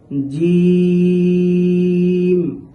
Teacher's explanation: জিহ্বার মধ্যখান তার বরাবর উপরের তালুর সাথে লেগে উচ্চারিত হবে